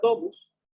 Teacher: dijimos que la O era la tónica porque ahí recaía la fuerza, pues la átona sería la U. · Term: vocales tónicas